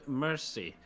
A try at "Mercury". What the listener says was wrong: Well, you got everything right except for Mercury. You said mercy.